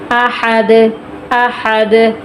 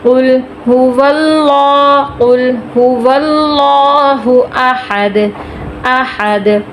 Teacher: قل هو اللہ احد، لفظ اللہ موٹا کریں گے کیونکہ اس کے پیچھے زبر آ گئی ہے۔ احد احد، آخر میں دال ہے، حروف قلقلہ میں سے یہاں پہ ہم قلقلہ کریں گے کیونکہ وقف کی صورت میں دال ساکن ہو جائے گا